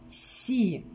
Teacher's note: это согласный мягкий глухой звук и гласный звук